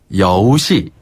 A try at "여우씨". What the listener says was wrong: 네, 여기서 여우는 잘하셨는데 씨가 아니라 씨. 씨. 씨앗 할 때 씨. 된소리 발음으로. 씨앗 할 때 씨.